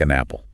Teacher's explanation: The N sound jumps over.